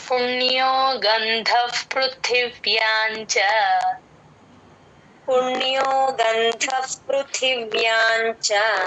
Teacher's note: చ ముందు సున్న పదం మధ్యలో వచ్చినప్పుడు ఎన్ సౌండ్ లాగే చెప్తాం